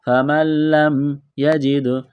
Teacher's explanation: نون ساکن کے بعد لام ہے، لام کے اوپر تشدید ہے تو نون کا لام میں ادغام کریں گے